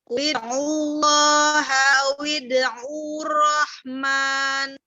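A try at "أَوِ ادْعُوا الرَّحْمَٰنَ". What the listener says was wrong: Tidak dipanjangkan, tetapi ditasdidkan. Wid'ur rahman. Intinya kaidahnya sudah tahu ya bahwa mat bertemu dengan hamzah wasol itu dibaca tidak panjang ketika wasol dan dibaca pendek ketika wakof. Dibaca panjang ketika wakof, dibaca tidak panjang ketika wasol.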